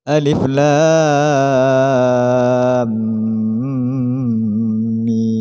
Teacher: alif dibaca pendek atau tidak termasuk huruf mad, lam dibaca 3 alif, mim juga dibaca 3 alif dengan tasydid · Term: mad lazim harfi